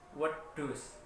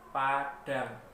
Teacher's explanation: Untuk DHA atau do itu dinamakan D palatal, di mana bunyinya berasal dari langit-langit mulut. Apabila lidah kita menyentuh langit-langit mulut, kemudian kita ucapkan do, maka akan muncul huruf do palatal.